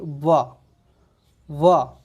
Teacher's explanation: नीचे वाला जो ओंठ है ऊपर वाले दांतों को स्पर्श कर रहा है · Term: दंतोष्ठ व्यंजन